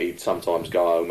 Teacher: notice H being dropped out everywhere